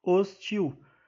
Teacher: na palavra hostil, a sílaba tônica é a última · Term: oxítona